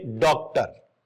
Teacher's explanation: यह आ और ओ के बीच की ध्वनि है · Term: आगत स्वर